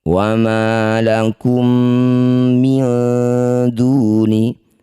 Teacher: Mim sukun bertemu mim disebut bacaan namanya idgham mimi atau idgham mli. Masukkan bunyi mim pertama pada mim kedua dengung dua harakat.